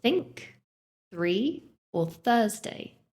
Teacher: The first one, th, is voiceless. This means you don't use your voice to pronounce it. It's just air. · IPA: /θ/